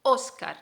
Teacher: óscar y lleva tilde en la o entonces la sílaba tónica la sílaba fuerte es o